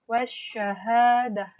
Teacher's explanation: Nah, di sini kata atau suara L-nya, suara dari alif lamnya tidak didengar, tidak dikeluarkan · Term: alif lam syamsiyah